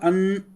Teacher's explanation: अनुस्वार अन नाक से उच्चारण हो रहा है, इसलिए इसको नासिका कहते हैं।